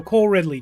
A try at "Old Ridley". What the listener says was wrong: yeah, old Ridley. Not cold Ridley, old Ridley.